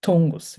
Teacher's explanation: 통을 할 때 숨을 강하게 내뱉으면 통고스 이렇게 됩니다